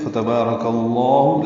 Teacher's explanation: فتبارک میں فاتح جلدی سے پڑھنا ہے، با الف مدہ ہے، 2 حرکات لمبا کریں گے ، را پر پڑھیں گے، کاف باریک ہے، لفظ اللہ سے